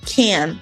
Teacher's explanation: nasal alveolar, que é produzida com a ponta da língua nos alvéolos, que é um local que fica um pouco mais para frente no céu da boca, logo atrás dos dentes superiores.